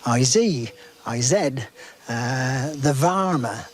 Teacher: that use of the voiced Z instead of S and V instead of F